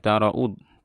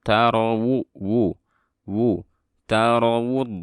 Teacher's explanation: ini waw jangan dibaca hamzah ya